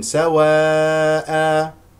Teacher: الوقوف على سواء بمد العوض بمقدار حركتين